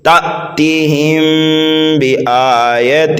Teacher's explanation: میم ساکن کے بعد حرف با آ رہا ہے، یہاں پر جو ہے اخفاء شفوی ہوگا، یہاں پر بھی جو ہے غنہ کر کے پڑھنا ہے